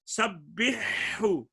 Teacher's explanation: اور یہاں پہ ساتھ فرما دیا سبحو، اگر حروف حلقی آپس میں ہم جنس ہیں یا متقارب ہیں تو پھر بھی ادغام نہیں ہوگا۔ ہا اور ہا آپس میں قریب المخرج ہیں، ادغام نہیں ہوگا۔